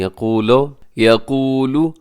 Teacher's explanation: میں یقول نون ساکن کے بعد یا یرملون کا ادغام کیجیے گا. یقول لمبا کیجیے گا، واو مدہ ہے، قاف کو موٹا رکھیے گا